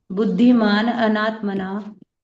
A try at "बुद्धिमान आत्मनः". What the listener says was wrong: अनात्मन नहीं, बुद्धिमान आत्मनः है।